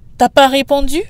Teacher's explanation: And when the subject is tu, you in formal singular, it's very common to also drop the u sound in tu. So we just get t'as pas répondu?